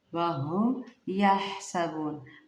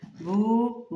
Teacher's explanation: ہا کو باریک ٹھنڈا نرمی کے ساتھ ادا کیجیے گا۔